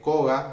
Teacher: hay una A que es átona, que no se acentúa, y esa A se suele decir que es una vocal de sostenimiento que ayuda a sostener para que se pueda pronunciar esa consonante final.